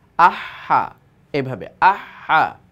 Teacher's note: এইভাবে একটু হলকের মাঝখান থেকে বের করার চেষ্টা করব। ঠিক হলকের মাঝখান থেকে কিন্তু হাও আসে